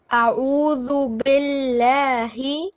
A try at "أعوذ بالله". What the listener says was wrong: Make your ayn a bit more in the middle throat.